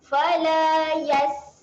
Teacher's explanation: Huruf sin ketika mati dia kena keluar angin.